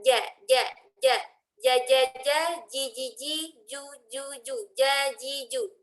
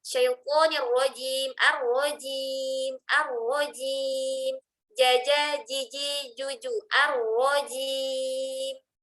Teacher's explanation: Lebih lembut karena tengah lidah kita ke tengah langit-langit. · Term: huruf jim